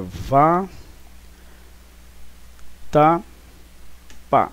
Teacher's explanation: É a última sílaba, então, que é a tônica. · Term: sílaba tônica